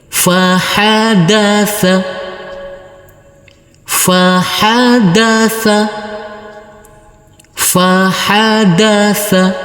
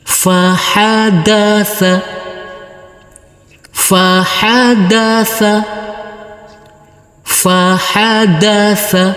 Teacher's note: huruf Fa kita baca pendek huruf ha kita baca pendek huruf Dal kita baca pendek dan huruf tsa kita baca pendek